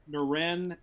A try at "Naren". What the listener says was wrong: Will you stop saying Naren? It's not how you say it. There is no accent on it.